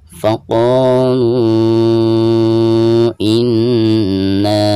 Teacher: Faqalu. Dan ketika membaca lu di sini dipanjangkan 4 atau 5 harokat karena dihukumi mad jaiz munfasil. Mad tabi'i lalu berhadapan dengan huruf hamzah di lain kalimat ya.